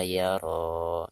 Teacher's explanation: Ketika diwakofkan, huruf ro-nya dibaca 2 harokat. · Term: mad tabi'i